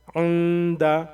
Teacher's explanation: کیونکہ دال سے پہلے اگر نون ساکن آ جاتا ہے تو اس کو یہاں پہ غنہ اور اخفا دونوں کریں گے، یعنی ناک میں آواز کو چھپا کر کے ہم بھنائیں گے